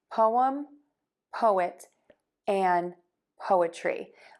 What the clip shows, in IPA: poʊəm